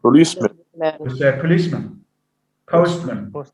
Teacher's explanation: instead of having man as a strong form it goes to a schwa because of the effect because of the influence of stress on